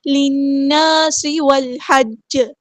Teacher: نون پہ غنہ زمانی ہو رہا ہے، ایک الف کے برابر یہاں پہ رکیں گے · سین کی سٹی ہم واضح کریں گے